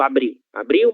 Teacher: a letra L, ela tem som de U em posição final de sílaba